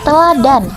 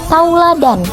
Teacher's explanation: di mana bunyi e berubah menjadi au